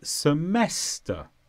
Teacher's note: the stress is on mess semester